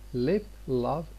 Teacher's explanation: This L can be clear, L, where the front of the tongue touches the alveolar ridge.